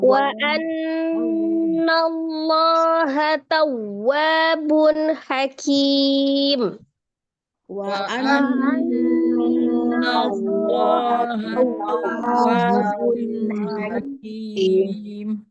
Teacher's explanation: ini dengan naber ya, wa tasdid di naber